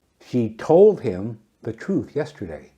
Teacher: When you stress she, it means she was the one who told him.